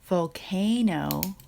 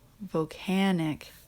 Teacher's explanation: last so you're going to have a word like volcano where you hear the long a sound but in here volcanic it changes to a short a sound